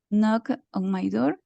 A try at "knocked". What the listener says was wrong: No, knocked. Falta el golpe final de la D. Knocked.